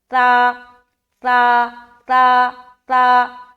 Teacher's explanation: ता को जब अदा करेंगे तो सीटी वाली सिफत नहीं आएगी, नरमी के साथ इसे अदा करना है।